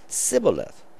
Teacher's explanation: the Sibboleth would begin with the tongue in the T position